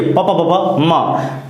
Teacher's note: दोनों ओंठ हल्का से चिपकता है